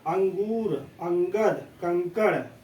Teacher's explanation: लेकिन अनुस्वार का हम उच्चारण क्या करते हैं, केवल नाक से करते हैं।